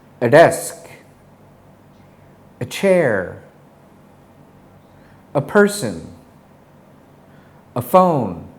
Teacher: notice how the schwa sound is very quiet and said very quickly · Let's practice the schwa sound using the articles a, an, and the. When saying the article a, we reduce the sound to a basic schwa sound. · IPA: /ə/